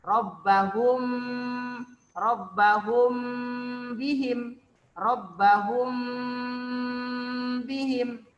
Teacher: Ikhfa Syafawi cara membacanya harus disertai dengan dengung ataupun gunnah